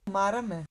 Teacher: These two shapes are called rising accents, where the pitch does rise over most of the word.